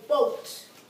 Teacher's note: what's being pronounced is the O and it's long but the a is not being pronounced